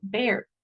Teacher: la e es un poquito más estirada. Entonces ustedes han visto la boca de una rana, de un sapo, o sea, es como como superestirada.